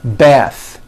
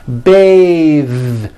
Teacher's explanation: when you change it into a verb, to bathe, the vowel changes to an A sound and the TH is voiced. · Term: voiced TH